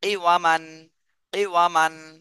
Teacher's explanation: ওয়াও এর উচ্চারণটা ঠোঁট গোল করে হবে